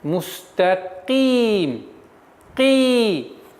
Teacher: Теперь каф, звук каф. Каф твердый звук, но при появлении кесры она переходит на мягкость произношения.